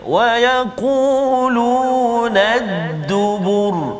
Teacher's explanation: Huruf ra yang berbaris tu kalau kita perhatikan dua contoh tadi, satu ra berbaris depan, satu ra berbaris atas, tapi kita matikan dia sebab kita waqaf dan kita tengok huruf sebelum dia huruf zal dan juga huruf ba, kedua-dua tu baris depan, maka bunyi ra tu bunyi tebal. Kita tafkhimkan bacaan kita pada huruf ra tersebut.